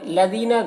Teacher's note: لَذِينَ دال کو باریک پڑھنا ہے اور یہاں پر یا مدہ ہے تو اسے ایک الف کے برابر کھینچیں گے